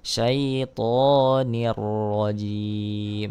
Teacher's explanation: adalah hukum idgam bila ghunah ya kesarotain bertemu dengan huruf ro ya dibaca dimasukkan tanpa mendenggungkan suaranya